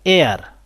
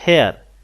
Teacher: এখানে এইচের উচ্চারণটা হয়নি, এখানে একটা ভাওয়েল সাউন্ড আসছে